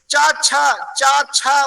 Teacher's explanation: च छ उच्चारण करने से आपका जीवा जो जीवा जहां टच करती है ऊपर वो तालु स्थान है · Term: तालव्य वर्ण